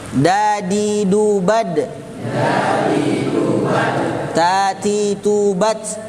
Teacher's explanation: Ujung lidah dengan pangkal 2 buah gigi atas. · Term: torful lisan